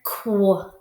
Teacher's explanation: this is a blend because it makes two sounds. It sounds like a K and a W.